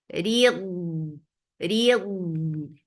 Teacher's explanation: Read for kasra give E sound attached with dod. Dod will get رخاوة and استطالة. ريض and make dot heavy too.